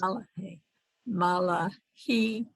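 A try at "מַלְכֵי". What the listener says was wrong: It's not mal. It's mi. 2 dots. Malche. So it's mi. Just mi. Just that mem sound. Mi lachim.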